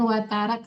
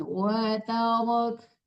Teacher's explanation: jangan watarak, tapi watarok, tebalkan rohnya, watarok, jangan nerak, tapi watarok, setiap roh berharakat fathah itu tebal, harakat dhammah tebal.